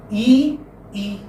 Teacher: with e why because your your lips remain split e e whether you say e or e your lips are not rounded they are unrounded